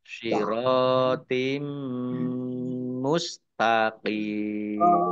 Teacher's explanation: Mim tasdid dibaca gunnah atau mendengung, tahan 2 harokat